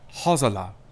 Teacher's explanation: I did pronounce that S like a Z, because that S is between two vowels, so that's how you get that Z sound.